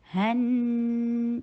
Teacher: ہا کو حلق سے ادا کیجئے اور نون کے اوپر 2 حرکہ غنہ کیجئے